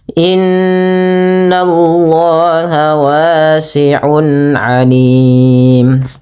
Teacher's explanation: Yaitu boleh dua, boleh empat, boleh pula enam harakat. Tapi kita ngambil yang tengah-tengah saja tidak terlalu panjang dan tidak terlalu pendek, yaitu empat harakat. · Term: mad arid di sukun